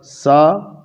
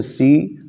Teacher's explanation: مثال کے طور پر ایک حرف ہے سین اور ایک حرف ہے صاد. دونوں حرف کا مخرج زبان کی نوک اور اوپر نیچے کے جو بڑے دانت ہیں ان دانتوں کے درمیان سے ادا ہوتا ہے